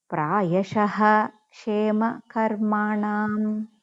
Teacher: So if ksha before visargam is there, means that visargam we have to pronounce complete ha